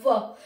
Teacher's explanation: व को हम दंतोष्ठ कहते हैं, दांत और ओष्ठ दोनों चलते हैं व को बोलने में, व, तो दांत और ओठ दोनों टच करते हैं।